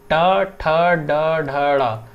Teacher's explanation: ये आप महसूस कर पा रहे होंगे कि हमें अपनी जीभ को ट्विस्ट कर रहे हैं, तब ये ध्वनियाँ निकल रही हैं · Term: मूर्धन्य ध्वनियाँ